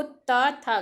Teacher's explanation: जब आप बोलते हो ता था तो आपकी जो जीवा होती है वो दांतों से टकराती है